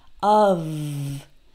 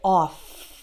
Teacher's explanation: in the word of, spelled with only one F, the F is actually pronounced like V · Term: V sound